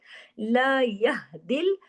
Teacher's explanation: आवाज हा की सीने की तरफ चली गई इसको गले में नहीं ले